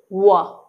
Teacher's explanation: व बोलते समय दंत और होंठ जो है एक दूसरे को स्पर्श कर रहे हैं